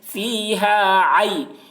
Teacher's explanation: کے برابر کھینچ کر پڑھیں گے، فیہا عین یا زبر عی، یا ساکن سے پہلے زبر ہے، یا لین ہوا، اس لیے یا لین کو نرم آواز کے ساتھ جلد پڑھیں ، معروف پڑھیں، مجہول آواز سے بچیں، فیہا عی، نون دو